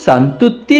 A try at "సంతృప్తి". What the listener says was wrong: అది సంతృప్తో సంతూరు సోపో కాదు, సంతృప్తి. ఉచ్చారణ సరిగ్గా లేకపోతే అక్షరాలు అసహ్యించుకుని ఛీ అని ఉమ్మేస్తాయి గ్రాఫర్, తెలుసుకో.